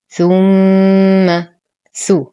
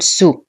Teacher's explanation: ثو حرف لثوي ولا أقول سو